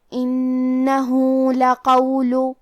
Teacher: کلمت لقول میں حرف القاف کو ہمیں موٹی آواز میں پڑھنا ہے اور کیونکہ لام پہ پیش ہے تو ہم پیش کو ظاہر کریں گے. · ہم اپنی آواز 2 مد کے برابر لمبی کریں گے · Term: مد صلہ صغرا